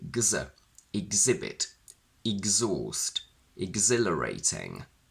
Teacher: we keep the stress on the second syllable